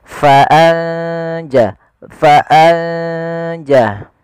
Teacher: Tapi bacaan ikhfa yaitu kita samarkan ke huruf setelahnya. Kalau di sini huruf jim maka nunnya samarkan ke huruf jin.